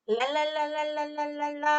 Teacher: 도움의 방법은 그래서 랄랄랄랄랄랄랄라 할 때처럼 혀가 됐다 떨어졌다 됐다 떨어졌다 하는데 순간적으로 닿았다가 떨어져요. 한참 닿는 것이 아니라